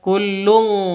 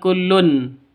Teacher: q alima shattahu wa tasbihah kullun qad alima kullun qad tanwin bertemu dengan qof cara bacanya samar didengungkan siap-siap Siap ke huruf qofnya. Tanwinnya ditambah dengan ng ya. Maka bacanya kullung bukan kullun tapi kullun qad. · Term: ikhfa hakiki